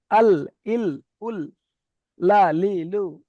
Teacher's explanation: জীবের আগার কিনারা এবং সামনের উপরের দুই পাশের দাঁতের গড়ার সাথে লাগিয়ে সামনের উপরের দুই পাশের গড়ার দাঁত অর্থাৎ সামনে যে দাঁতগুলো রয়েছে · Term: লাম